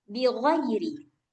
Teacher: Makhraj ghain ini di ujung tenggorokan.